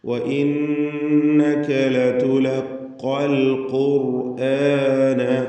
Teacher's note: ഖാഫുകൾ ആവർത്തിച്ചു വരുന്നു. തഫ്ഖീം ചെയ്തുകൊണ്ട് തടിപ്പിച്ചുച്ചരിക്കണം. അൽ ഖുർ എന്ന് പറയുമ്പോൾ റായിനും തഫ്ഖീമാണ്.